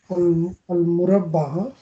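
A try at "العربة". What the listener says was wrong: आल ये आइन है. आल अरुबा.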